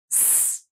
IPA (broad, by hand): s